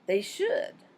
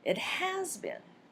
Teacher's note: Switching the stress to the verb shows agreement.